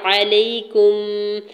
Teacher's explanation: علیکم، عین کے اوپر سنگل زبر جلدی سے ادا کریں گے۔ یا ساکن سے پہلے لام کے اوپر زبر ہے، یا لین ہو رہا ہے، نرمی سے موڑتے ہوئے ادا کریں گے اور کاف کی پیش کو میم ساکن کے ساتھ ملاتے ہوئے پڑھیں گے۔